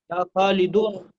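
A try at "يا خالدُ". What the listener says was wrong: या खालिदो, क्योंकि या है. तो एक ही पेश लगेगा, या खालिदो, या खालिदो.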